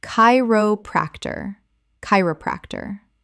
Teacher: c h makes a k sound. Four syllables with stress on the first.